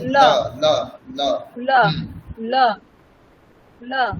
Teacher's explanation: হ্যা জিহা দাঁতকে স্পর্শ করবে।